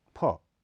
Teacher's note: यह महाप्राण अघोष ध्वनि है इसका उच्चारण स्थल भी होठ है यहां प्राण वायु प से अधिक मात्रा में बाहर निकलती है